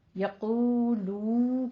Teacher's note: ٹھیک ہے، یقولو کہنا ہے، تھوڑا سا 2 کاؤنٹ کرنا ہے، ہونٹوں کو گول کرتے ہوئے تھوڑا سا آگے کھینچنا ہے 2 حرکتوں کے برابر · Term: واو مدہ